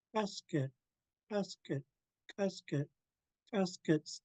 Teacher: This pinch K has nothing to do with the back of the throat. It's being kicked from the middle.